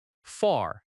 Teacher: Far has a strong R sound in American English.